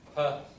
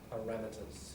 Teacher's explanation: The ra, second syllable gets the stress. Per, remember schwa for the first unstressed syllable